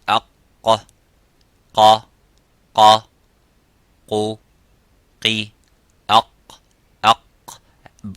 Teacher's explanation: make the sukun and make that sound of aq, you can see how the sound is cut. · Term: qaf